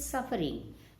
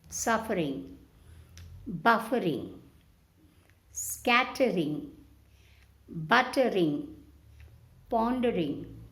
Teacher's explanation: The R is only sounding slightly. We are not stressing on R.